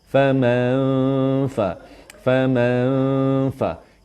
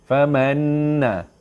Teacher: Dengung sengit ni adalah dengung yang kita sembunyikan bunyi nun tapi dah nak ready nak masuk fa.